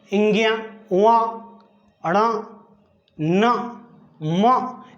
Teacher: देखिए, नासिक के व्यंजन इसलिए कहते हैं, जब भी इनका उच्चारण करते हैं तो हवा नाक से निकलती है।